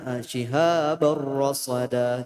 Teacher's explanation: Ditasydidkan huruf ro-nya karena termasuk idgham. Nah, tapi idghamnya tidak ditahan. Jadi dia bila gunnah dengan tidak ditahan ya. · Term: idgham bila gunnah